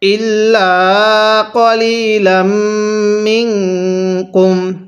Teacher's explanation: লামকে মিমের সাথে লাগিয়ে গুন্নাহ করব · এই নুন সাকিনের মধ্যে আমরা গুন্নাহ করব, কারণ সাকিনওয়ালা হরফের পরে, এই নুন সাকিনওয়ালা হরফের পরে যদি ইকফার 15টি হরফ থেকে কোনো একটি হরফ থাকে তাহলে নুন সাকিনটিকে গুন্নাহ করে পড়তে হয়।